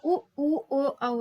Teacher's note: होंठ बिल्कुल वृत्त हो जाते हैं, गोलाकार हो जाते हैं, तो उनको वृत्ताकार कहते हैं